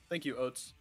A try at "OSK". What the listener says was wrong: No, not Oats. Oats is what you eat. We don't eat OSK. OSK.